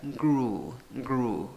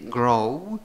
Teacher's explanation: En el pasado, U con trompita, con piquito, U larga. La U con dos puntitos, U larga.